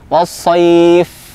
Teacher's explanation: Huruf fa ketika sukun, ya, termasuk huruf hams yang memiliki sifat hams, maka keluar nafasnya.